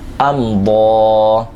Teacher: ضاد کے اوپر کھڑا زبر ہے، اس کو ایک الف کے برابر کھینچیں گے